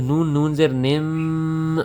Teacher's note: جس نون کے اوپر تشدید ہو، جس میم کے اوپر تشدید ہو وہاں پر غنہ ہوتا ہے، ہم آواز کو ایک الف کے برابر لمبا کرتے ہیں اور ناک میں لے کر جاتے ہیں